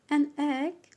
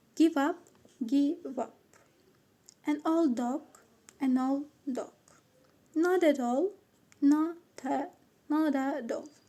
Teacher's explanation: one word ends in a consonant and the next word starts with a vowel. The phrase will be reanalyzed as if the consonant is a part of the second word. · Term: linking